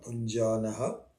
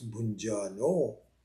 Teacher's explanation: So bhunjanaha, bhunjano, which is a visarga, bhunjanaha, when followed by a soft consonant, which is na, becomes bhunjano